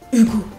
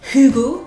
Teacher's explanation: On dit un H aspiré d'ailleurs, mais moi je trouve qu'on expire le H.